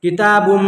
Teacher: तनवीन के बाद हुरूफ यौमीन के 4 हरफों में से मीम है, यहाँ भी आपको गुन्ना करना है